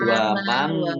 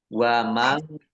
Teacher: nun sukun bertemu dengan huruf kaf, bacaan ikhfa dibaca samar-samar. Nah, ini jangan terlalu kelihatan engnya ya. Ini sering kalau membaca itu wamang.